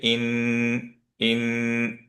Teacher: নুন সুকুনে যেটা আছে সেটাকে ইন, ইন, 2 কাউন্ট মিনিমাম ধরে রাখবো। কেউ যদি বাড়াতে চান কোনো সমস্যা নেই। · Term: গুন্না